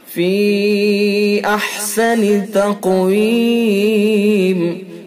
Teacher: فی یا حرف مدہ ہے اور یا حرف مدہ کے بعد حمزہ دوسرے لفظ کے اندر ہے تو لہذا اس کے اندر مد منفصل ہوگا۔